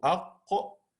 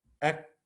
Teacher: the qaf is one of the heavy letters, okay? And the kaf is a soft letter